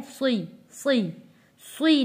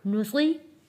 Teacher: साद को पढ़ते हुए सीन जैसी आवाज़ नहीं आनी चाहिए। साद को हमने मोटा पढ़ना है, सुई, सुई, सुई नहीं करना।